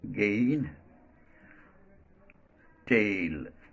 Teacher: it glides from a to e as in again tale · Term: diphthong